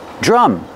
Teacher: you see the DR together make the J sound, like juice and jump. Plus the R sound, drum.